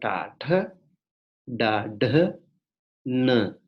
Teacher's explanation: We have tongue curling up, curling backward and touching the upper palate.